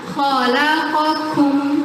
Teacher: Hams itu ada yang terkait dengan jaro-ya nafasun. Sedangkan qaf jahar, makanya lebih deras, lebih keras suaranya. · Ada qaf, ada kaf. Qaf sifatnya jahar, dia isti'ala. Kaf sifatnya istifal dan hams. Jadi kita nggak bisa samakan bunyinya.